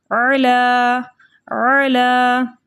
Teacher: लाम के ऊपर खड़ा ज़बर है, खड़े ज़बर को 2 हरकत की मिक़दार खींच कर पढ़ते हैं